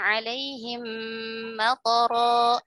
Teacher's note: Misalkan wa amtorna alaihim matara, matara itu toknya, perhatikan di kata matara itu harusnya toknya itu tidak dibaca panjang. Dia dibaca pendek.